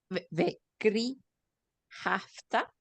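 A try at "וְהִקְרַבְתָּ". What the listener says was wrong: Make that a hik sound. Vehikravta.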